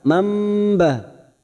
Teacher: Mam ditahan selama 3 harokat namanya bacaan iqlab.